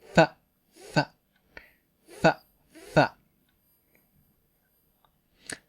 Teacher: English f, f uses the bottom lip and top teeth.